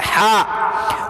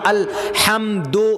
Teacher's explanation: وسط حلق، حلق کے بیچ سے ہا نکلتا